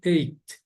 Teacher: Algumas pessoas dizem eight. Vocês estão ouvindo uma pequena explosãozinha de ar quando eu estou falando eight. A maioria de norte-americano fala só eight.